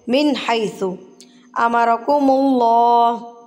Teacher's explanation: मिन पढ़ेंगे तो इजहार, मिन इजहार, ज़ाहिर करना कि यहाँ पर नून साकिन मौजूद है